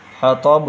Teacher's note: کی آواز موٹی ہوگی، بڑا ہا بھی نکلے گا، حطب، اور یہاں پر قلقلہ بھی ہوگا کیونکہ حروف قلقلہ جو 5 ہیں ان میں سے با بھی ہے · حطب، حمالۃ الحطب، اور تا کی آواز باریک ہوگی، حطب، یہاں پر تا کی آواز موٹی ہوگی، بڑا ہا بھی نکلے گا ، حطب، اور یہاں پر قلقلہ بھی ہوگا کیونکہ حروف قلقلہ